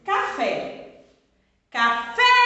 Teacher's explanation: Esse fé, ele é tônico, ele é forte. Então, é sílaba tônica. Eu pronuncio ele com maior intensidade.